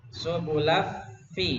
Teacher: Jadi makhrajnya dari lam, dari L langsung ke F ya, langsung ke F. Nunnya enggak ya, kita laf langsung ke laf ya.